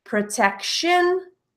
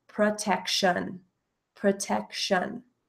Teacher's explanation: the ending T-I-O-N pronounced as a shin in my accent